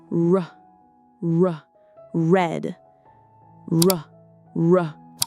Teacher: Repeat often the R sound like in red, river, or around. It's not a rolled R like in some other languages. Let it come from the back of your mouth. Soft and round.